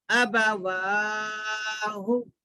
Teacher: زبر کو جلدی پڑھنا کھڑا زبر کو کھینچنا پیش کو بھی جلدی پڑھنا